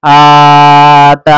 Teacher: حمزہ اور تا دونوں کھینچیں گے برابر